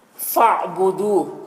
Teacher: عین ساکن جو ہے پیچھے والے متحرک حرف فا سے مل کر پڑھا جائے گا، الف کو نہیں پڑھیں گے کیونکہ الف میں کوئی حرکت نہیں ہے۔